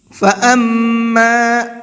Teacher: میم کے اوپر تشدید ہے، غنہ کر کے پڑھیں گے